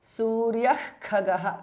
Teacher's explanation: Suryaha, visarga changes to Jihwa Muliya. Khagaha, khas mahapranaha.